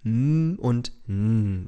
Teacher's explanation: Hier ist der Mund verschlossen, die Luft kann aber durch die Nase entweichen. So wird der wohlbetuchte „Bänker“ mit zugehaltener Nase zum ehrlich arbeitenden „Bäcker“. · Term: Nasale